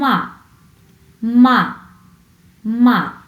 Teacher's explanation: এটি উচ্চ থেকে নিচে নেমে আসে, উপর থেকে নিচের দিকে নেমে আসে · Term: ফোর্থ টোন